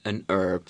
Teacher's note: I say an herb I don't pronounce the h